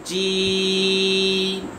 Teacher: جیم کو زبان کے درمیان تالوں کے درمیان سے ادا کریں گے، زبان کے درمیان تالوں کے درمیان سے ادا کریں گے، جیم۔